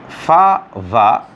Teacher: fa, va, labiodental, that is upper teeth and lower lip